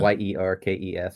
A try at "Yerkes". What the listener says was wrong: think you pronounced the E.